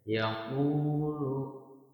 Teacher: Nah, di sini terdapat huruf waw, ya, waw sukun yang sebelumnya harokatnya adalah dhamma. Nah, u-nya ini dibaca panjangnya dua harokat, ya. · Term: mad